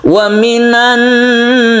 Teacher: membacanya guna karena dia menimbulkan tasydid Nun sehingga dibacanya dengung · nun mati bertemu dengan ya, ini kita sebut dengan idgham bi guna, membacanya juga guna yaitu didengungkan